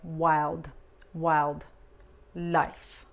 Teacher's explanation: Aquí la L muy sutil, no arqueamos la lengua mucho hacia atrás y la D es fuerte